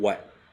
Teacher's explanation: you're really starting with like an oo sound right not a woo